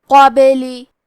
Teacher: کلمت قابلی میں حرف البا پہ جزم ہے یہاں با کا حکم ہے قلقلہ تو ہم یہ حرف کو ہلاتے ہوئے یہ کلمہ کو پڑھیں گے. لام کے نیچے زیر ہے تو ہمیں زیر کو ظاہر کرنا ہے.